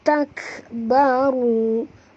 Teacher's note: Takbaru, ru sini tebal, jangan baca tak baru, bukan baru tapi baru, tebal, ya. Ra baris depan kena baca tebal.